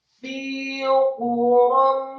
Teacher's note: Illa, jangan illa fi, tetapi illa fi quram, kata fi quram, fa-nya dibaca kasroh 2 harokat, membaca huruf fa, gigi seri atas kita ditempelkan dengan bibir bawah. Fi quram, kemudian fa-nya dibaca kasroh 2 harokat karena setelah huruf fa ada ya sukun.